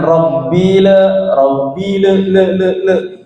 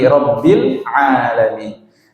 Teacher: pengucapan huruf lam bersukun, lam sukun ini tidak boleh dipantulkan. Robbil langsung masuk ke ainnya.